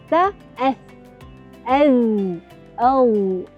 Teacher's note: belakang hujung lidah dengan hujung gigi hadapan bahagian atas